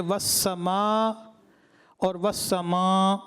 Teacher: سما ناک میں آواز لے کے چلے گئے